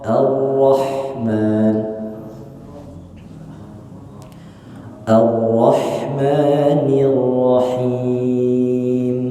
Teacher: jangan orro, tapi A-nya dibuka dulu mulutnya A, baru masuk ke ro. Gitu. A-nya jelas A, baru ro.